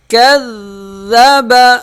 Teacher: تشدید والا حرف جو ہے وہ سختی سے ادا ہوتا ہے۔ کاف ذال سے مل جائے گا، سختی سے ملے گا اور ذرا رک کر ادا کیا جائے گا۔ کذب، وقف، کذب، یہ ذرا جو رکنا ہے کذ، یہ تشدید ادا ہو رہا ہے۔